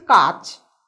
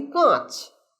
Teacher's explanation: যেখানে নাসিক্য ব্যঞ্জন নেই সেখানে আমরা একটা চন্দ্রবিন্দু অতিরিক্ত যোগ করি